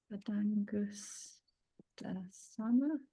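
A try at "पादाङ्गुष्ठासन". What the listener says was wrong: It's got an H on it for some because it's Angustha. Angustasana. It's got an H after the T.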